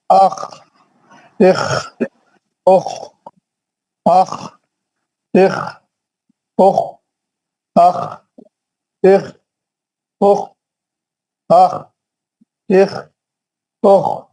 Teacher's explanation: اوپر ہی حلق سے پڑھنا ہے، موٹا اور بھاری پڑھنا ہے، کھردرے آواز سے پڑھنا ہے